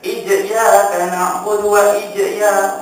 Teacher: Bila kita dah tutup ruang udara akan keluar huruf jim. Walaupun kita tak jadikan qqalah.